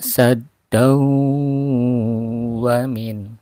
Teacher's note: Sadd Wain anfusihim nah ini sad langsung ke ada tasyid kan sad terasa terasa udara keluar dari ee hidung dan mulut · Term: dengung